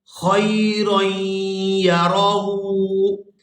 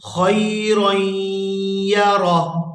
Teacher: یہاں پر بھی آیت ختم ہو رہی ہے، وقف کریں گے تو وقف کی صورت میں یہاں ہا کو ساکن کر دیں گے